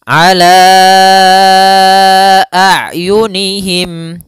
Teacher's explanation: sifat ain bainiyah di antara sifat syiddah dan rohawa. Syiddah itu suaranya tertahan, sedangkan rohawa suaranya dialirkan.